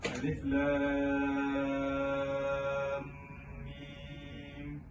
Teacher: Lam pula dibaca 6 harakat, dan di dalam lam terdapat huruf terbagi pada 2 huruf, iaitu huruf lam dan huruf mim. Mim itu adalah mim sukun, maknanya perlulah didengungkan bacaannya. Jadi dengung itu perlulah dibaca dengan 2 harakat, dan selepasnya adalah mim dibaca dengan 6 harakat. Jadi bacaannya perlulah seperti ini, alif lam mim. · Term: mad lazim harfi